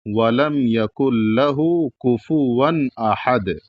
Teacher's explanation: اور ون میں جو تنوین ہے تو یہاں پر غنہ نہیں ہوگا کیونکہ اس کے بعد حروف حلقی میں سے احد کا حمزہ موجود ہے، اور قاعدہ ہے کہ نون ساکن یا تنوین کے بعد اگر حروف حلقی میں سے کوئی حرف آئے گا تو وہاں پر غنہ نہیں کیا جائے گا، اور جب غنہ نہیں کیا جائے گا تو اس کا مطلب ناک میں آواز نہیں جائے گی اور اس کو پورا پڑھا جائے گا، یعنی پورا پڑھ کر کے گزر جایا جائے گا۔